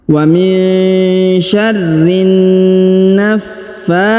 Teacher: Kemudian wa min syarrin, perhatikan huruf nun sukun bertemu sya maka didengungkan dan disamarkan. Wa min syarrin naffatsati.